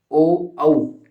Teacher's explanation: तो हमारा कंठ और ओष्ठ से जो ध्वनि उच्चरित होती है वो ओ और औ होते हैं। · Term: कंठोष्ठ वर्ण